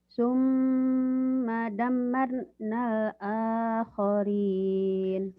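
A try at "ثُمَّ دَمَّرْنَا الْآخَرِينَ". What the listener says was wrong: Kurang, harusnya gini ya. Summa damnya kan mimnya bertasydid gunnah. Mimnya juga bertasydid gunnah. Dua tuh gunnah. Summa dammarnal akhirin. Ini yang dikatakan tahsin. Kamu tahsinnya kurang.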